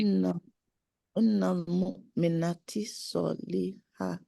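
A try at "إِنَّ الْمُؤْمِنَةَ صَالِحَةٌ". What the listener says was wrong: Mu'minata, not T, ta, with fatha.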